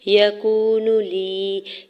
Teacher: یکون لی، یا کے زبر کو بغیر کھینچے ہوئے ادا کرنا ہے، واو ساکن سے پہلے کاف کے اوپر پیش، واو مدہ ہو رہا ہے، دو حرکت کھینچ کے ادا کریں گے۔